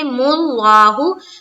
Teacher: लफ्ज अल्लाह का लाम से पहले पेश है तो इसको पुर रखेंगे